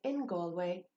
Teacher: it's the n sound even though galway begins with a g